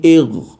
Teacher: लगते ही आवाज़ ख़त्म हो जाएगी, आवाज़ दोबारा नहीं उठेगी